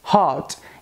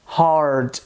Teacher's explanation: a gente não consegue né ah perceber a presença do r retroflex no inglês britânico no inglês americano a gente tem a presença do r retroflexo